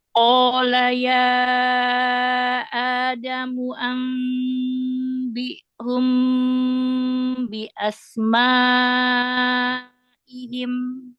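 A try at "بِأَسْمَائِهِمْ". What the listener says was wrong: Bi asma, bukan bi asma. Kalau bi jadi tahsil hamzahnya nggak jelas, jadi samar. Bi asma'ihim.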